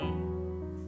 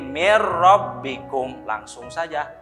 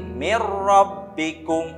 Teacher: Ini nun sukun bertemu huruf ro. Nah, di sini mah bila gunnah ya. Tidak boleh disertai gunnah. Yang asalnya ditulisannya min rabbikum karena hukumnya idgham bila gunnah, jadi mir rabbikum langsung saja.